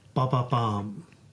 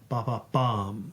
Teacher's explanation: So you stress the third syllable. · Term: anapaest